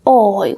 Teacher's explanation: the H has no sound at all in Spanish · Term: silent